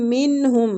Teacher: نون کا اظہار اس لیے کریں، اظہار حلقی ہو رہا ہے کیونکہ آگے حلقی حروف ہا آ رہا ہے